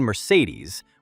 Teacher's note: the elf queen Mercedes with the stress on the last syllable